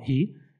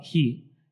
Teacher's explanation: Usando a parte glotal aqui, né? Da fricativa glotal, hi, ou você pode falar hi, né? Usando o palatal